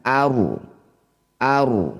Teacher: Ro sukun didahului fathah disebut ro tafkhim. Ro sukun baca dengan tebal. Angkat ujung lidah sampai menempel di langit-langit lisan.